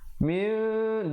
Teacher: ditukarkan bunyi nun kepada bunyi mim yang nipis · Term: iqlab